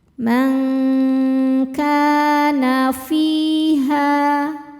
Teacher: Sebab ada alif yang sebelumnya berharakat fathah. Cara bacanya panjangkan dua harakat. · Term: mad thobi'i zohiri